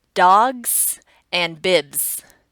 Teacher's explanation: We're already vibrating at the end of the G and B sound at the end of those words, so we naturally use the Z sound as our plural S.